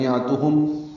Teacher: عین وسط حلق سے ادا کریں گے